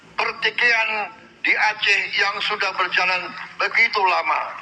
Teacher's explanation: Pelafalan diftong ai dilafalkan dengan mengucapkan vokal i yang kemudian diganti dengan vokal e. Tetapi, pelafalan diftong yang benar adalah ai.